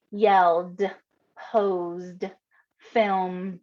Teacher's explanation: it's phonetically how it sounds they're going to write id now ed represents the d after a voiced consonant